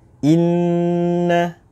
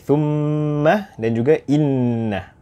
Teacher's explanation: ia dikenali sebagai mim dan juga nun musyaddadah dan harus dibaca dengan dengung